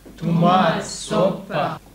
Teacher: Tomat, soppa. Ner på första, tonaccent. Upp på slut.